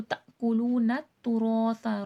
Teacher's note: رو کو موٹا کر کے پڑھا جائے گا، سا نرمی سے پڑھا جائے گا